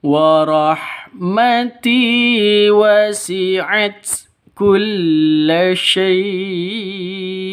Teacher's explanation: Wa rahmati wasi'at, mati ya, ti panjang 2 ketukan karena ada ya mati diawali dengan kasrah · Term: mad tabi'i